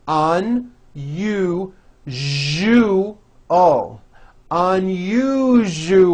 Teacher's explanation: That second syllable, ju, the one with the underline, needs to be voiced. Put your hand on your throat and feel for the vibration in the second syllable.